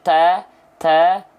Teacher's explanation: kalau huruf ta dia keluar nafas sedikit